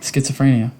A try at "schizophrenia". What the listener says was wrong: there's there's not an a in there